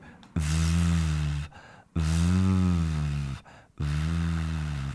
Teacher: So if you cover your ears, you can go VV with your teeth and your lips touching V and that voice activated.